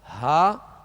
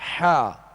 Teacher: ہا جو ہے وہ ابتدائی حلق سے، اور حا جو ہے درمیانی حلق سے ادا ہوتا ہے